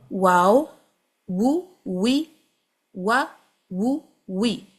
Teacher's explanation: واو میں پوری طرح سے اپنے ہونٹوں کو گول کریں اور پروٹ کریں آگے سے